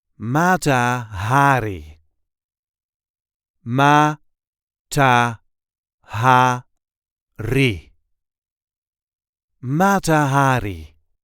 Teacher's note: There is a light emphasis on the first syllable of her last name.